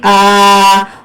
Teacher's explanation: اب حمزہ کو ایک الف کے برابر کھینچ کر پڑھیں گے آ، اور واو کو ملائیں گے ہم واو کے ساتھ.